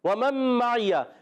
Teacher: واو ہونٹوں کی گولائی سے ادا ہوتا ہے، پیش بھی ہونٹوں کی گولائی سے ادا ہوتا ہے. · ادغام مع الغنہ. کیونکہ یہاں پر نون ساکن کے بعد میم آ گیا، ادغام مع الغنہ ہوگا